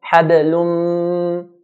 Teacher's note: mim has an automatic nasalization. So if I hold the nose, I'll feel that ghunna coming. Habalum. So this is what idgham with ghunna is.